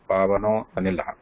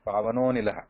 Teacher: Do not stop, do not pronounce a separately, do not pronounce a separately while reciting the shloka.